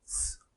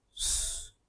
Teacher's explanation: One way to say s is with unrounded lips. S. Another way is to say it with rounded lips.